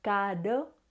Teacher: Un sonido más débil, en el que la punta de la lengua toca una única vez los alveolos